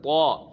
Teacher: زبان کی نوک سامنے والے اوپر کی دو دانتوں کی جڑوں سے جب لگتی ہے تو طا پڑھا جاتا ہے